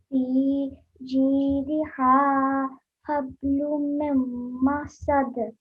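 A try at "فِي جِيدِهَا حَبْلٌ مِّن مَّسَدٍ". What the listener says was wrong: So you have to keep the meme sound in for 2 seconds at least.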